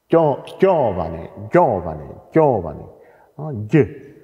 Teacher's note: das sind keine palato-alveolare, also kein J und kein Tsch, sondern dort wird das Palatale ausgesprochen.